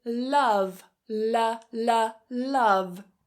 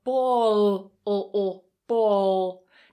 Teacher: The light L, which appears before a vowel, and then the dark L, which appears after a vowel. The difference here is the light L is released.